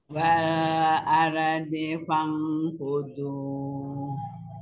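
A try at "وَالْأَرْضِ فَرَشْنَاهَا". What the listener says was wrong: Lamnya jangan mantul. Ar juga. Wal aldi. Fudu. Fangfudu. Fudu tobi'i aja, jangan kepanjangan. Fangfudu. Aldi, jangan mantul, tadi sudah bagus. Wal aldi fangfudu.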